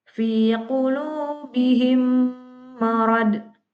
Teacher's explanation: Suatu bacaan dikatakan hukum bacaan idgham mutamasilen apabila ada mim sukun bertemu dengan huruf mim. Dan cara bacanya dengan memasukkan huruf mim ke dalam huruf mim yang disertai dengan gunnah